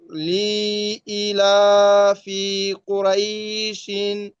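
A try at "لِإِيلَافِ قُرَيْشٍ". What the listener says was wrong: হ্যাঁ কুরয় টান হবে না ভাই রয়া যাবার রয় জবরের বাম পাশে যজমালা ইয়া কিসের হরফ বলেন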